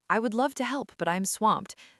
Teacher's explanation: Spoken very fast and flat, it sounds like I'm reading a script.